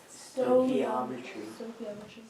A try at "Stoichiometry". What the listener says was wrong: You're actually supposed to get an oi in there. Stoichiometry.